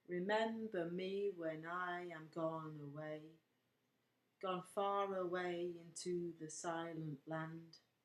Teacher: In other words, pent obviously means five. So, five stressed syllables per line. And that's what gives the line of poetry its rhythm. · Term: pentameter